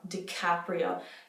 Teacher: Do you hear how much air is coming on that C?